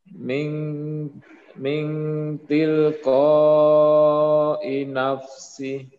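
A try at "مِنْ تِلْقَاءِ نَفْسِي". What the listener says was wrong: Panjangkan. Min tilqa'i nafsi.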